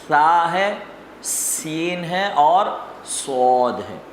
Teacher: سا نرم پڑھیں گے، سین پتلا پڑھیں گے سیٹی کی آواز کے ساتھ اور صاد اس کو موٹی آواز میں پڑھیں گے سیٹی کی آواز کے ساتھ